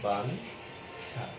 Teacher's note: এখানে ছয়ের ইওর জন্য নয়ের মতো একটি উচ্চারণ হচ্ছে